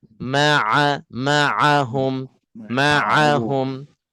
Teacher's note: Ain di tengah-tengah halquum ha di Pangkal halquum